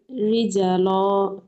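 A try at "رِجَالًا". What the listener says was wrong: জিমে টান আছে, খেয়াল করুন। রিজালা।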